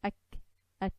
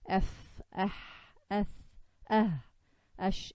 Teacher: If you notice ak, at, compared to the f, ath, ash, the air for kaf and ta is very less. It's like a shot of air, whereas the others are like a running of breath